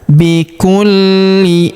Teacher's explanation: Huruf li kita tahan dan tekan karena terdapat tanda tasdid di atasnya.